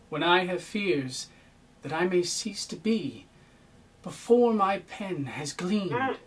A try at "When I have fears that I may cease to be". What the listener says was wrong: Cease to be. Cease to be. Cease to be. Cease is really important. Cease. At least equal emphasis. Cease be.